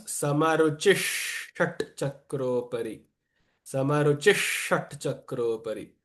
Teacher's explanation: When after the visarga there is a sh, the visarga also takes on the same pronunciation. So it becomes samaruchishat chakropari.